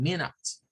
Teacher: algunos casos el sonido schwa se dice como una I corta, como una E corta, por ejemplo en la palabra minutes